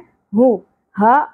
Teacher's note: اقصی حلق سے گہرائی کے ساتھ بغیر سانس کی اواز کے